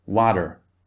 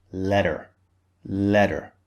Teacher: in American English the T sound especially when it comes in the middle of a word when there are some vowels either side of it they change the T sound to a D sound